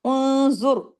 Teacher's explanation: ذو بھی ہیوی ہوگا، را بھی ہیوی ہوگا، کیوں؟ اس کے پیش کے اثر کی وجہ سے